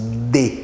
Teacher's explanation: Então a boca fecha parcialmente, né? De. Aí a língua encosta nos dentes. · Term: consoante